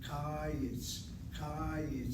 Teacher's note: I don't see a shvanach underneath the yud. I conclude that my first syllable is open with a short vowel, and that's why it is accented.